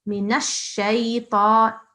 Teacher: I think you pronounce the noon separately, whereas there's no need. You can just pronounce it with the sheen, mix it with the sheen.